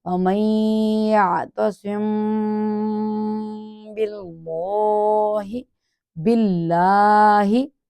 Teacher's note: میم ساکن کے بعد حرف با آ گیا، اب تو یہ اخفا کر کے گنہ کیا جائے گا ، کہاں ناک میں آواز جا کے اخفا چھپانے کو کا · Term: اخفائے شفوی